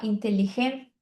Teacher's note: Então esse ti não existe no espanhol, por isso que a gente fala inteligente. T é bem forte também.